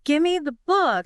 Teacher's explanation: That V becomes an M.